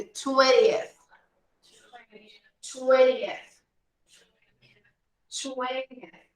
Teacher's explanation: a gente pode ignorar a letrinha T no inglês americano e pular do N direto para esse final aqui.